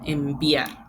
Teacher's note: es más difícil después de esa nasal que ha creado un cierre, volver a fricativizar, sino que es más fácil la oclusión porque ya hay un cierre. Entonces, en lugar de enviar, sería enviar.